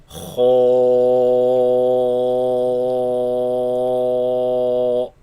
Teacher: the heavy sound, the sound is trapped in the mouth, producing an echo, such as pronouncing this one heavy letter, Kho, produces an echo in the mouth.